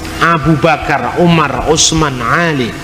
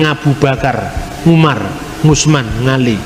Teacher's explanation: Orang Jawa tidak bisa ngomong huruf ain.